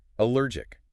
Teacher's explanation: The middle syllable is the powerhouse of the word. It has a rolling R sound deep in the mouth. · the final syllable ends with a sharp, clicking K sound in the back of the throat, even though it's spelled with a C, jic.